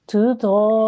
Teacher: this is a noon with a shadda on the top. That means it's a noon gunna. So you have to make a nasal sound and hold on that sound for about 2 seconds. Okay, so you've got your 4-second elongation over here, and then you've got a 2-second holding over here as well.